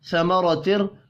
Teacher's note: را کو زبر کی وجہ سے پر پڑھیں گے